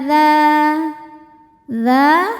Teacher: Ala dza dza hukumnya adalah mad thobi'i zohiri. Sebab ada alif yang sebelumnya berharakat fathah. Cara bacanya panjang dua harakat.